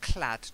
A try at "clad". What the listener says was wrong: Duh, not t. Duh. Clad.